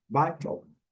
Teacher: Lembrando que nós temos aqui a primeira sílaba forte, a segunda bem fraquinha